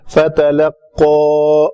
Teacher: قاف دو نقطے والا ہے، یعنی لوتھرا آپس میں بالمقابل تالو سے لگے گا